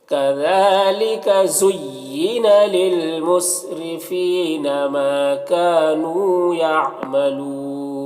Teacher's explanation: را کے نیچے زیر ہے، را کو باریک پڑھیں گے · یعملون میں وقف کی صورت میں مد عارض وقفی ہوگا تو اس طرح سے پڑھیں گے.